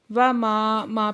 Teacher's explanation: ماں پہ الف مدہ ہے، دو حرکت کھینچ کے پڑھیں گے.